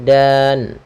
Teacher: Karena kita waqaf, nunnya ini wajib kita sukunkan, maka menjadi dan. Nah, sukun inilah yang kita namakan dengan sukun arid.